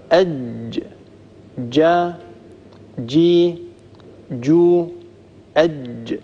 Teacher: جربوا هذا: أج جا جي جو أج. لاحظوا أن المخرج يقفل تماما، ينقفل المخرج نتيجة الالتصاق التام والمحكم بين وسط اللسان ووسط الحنك الأعلى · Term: الجيم الفصيحة